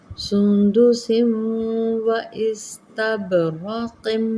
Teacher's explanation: تنوین کو واو کے اندر مدغم کریں گے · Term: ادغام غنہ